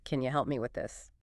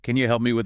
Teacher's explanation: And the breakdown, can you, often reduces to the weaker form, can ya. And help me tends to link smoothly, sometimes sounding almost like helmy. That P sound can be very light or even blend into the M.